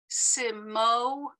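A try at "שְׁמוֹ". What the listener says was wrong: This is a shin.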